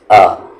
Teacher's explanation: حمزہ کا مخرج نیچے والا حلق یعنی کہ باٹم تھروٹ ہوتا ہے